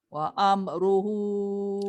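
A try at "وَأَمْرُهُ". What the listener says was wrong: Jaga mim. Jangan wa amruhu.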